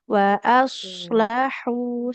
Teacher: Nah hu wa aslahu di sini shnya tebal huruf h-nya di tengah tenggorokan ya. Wa aslahu seperti itu.